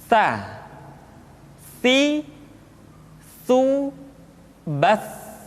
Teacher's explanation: Sa dikeluarkan dengan menyentuhkan ujung lidah kita dengan dinding dua gigi seri bagian atas. Diucapkan dengan suara dan nafas yang terdengar mengalir. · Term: huruf sa